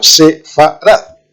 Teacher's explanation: la primera vocal e que es una e muy corta muy corta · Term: sheva